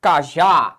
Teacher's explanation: Qual é a sílaba pronunciada com mais ênfase? É a última. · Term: oxítona